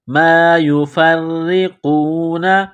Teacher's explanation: را کے نیچے زیر ہے تو را کو باریک کرنا ہے ، قاف کو موٹا کرنا ہے، قاف کو واو کے ساتھ